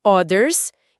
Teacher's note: você tem o TH vibrado com a língua no dente